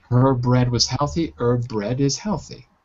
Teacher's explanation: so the two bees together we drop a bee